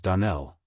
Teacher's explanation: Accent on the last syllable